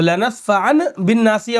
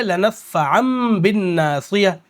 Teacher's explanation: تو لنصفعن بالناصیہ ہونا چاہیے، لیکن لنصفعن کے بجائے اب کہیں گے لنصفعم، کیونکہ تنوین کے بعد با آ رہی ہے